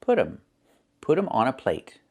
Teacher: you hear um instead of them. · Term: reduction